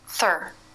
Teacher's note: the tip is slightly through the front teeth and then pulled slightly back · the lips they're totally relaxed for the th but flared for the r